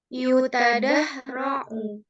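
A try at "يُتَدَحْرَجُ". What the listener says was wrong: Jim. Ini huruf jim ya. Afwan. Ini huruf jim.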